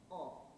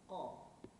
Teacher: Makhraj huruf qaf ialah pangkal daun lidah diangkat ke langit-langit lembut dan menekan pada anak tekak